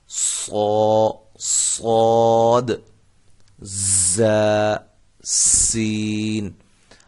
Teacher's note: یہ دیکھیں، صاد، ز، سین، یہ تین حروف ادائیگی میں آپ محسوس کر رہے ہوں گے کہ ان تینوں حروف میں سیٹی کی آواز پیدا ہوتی ہے۔ اب فرق یہ ہے کہ صاد کی جو سیٹی ہے یہ موٹی ہوگی، زا اور سین ان کی سیٹیاں جو ہیں وہ سیٹی کی جو آواز ہے وہ باریک ہوگی۔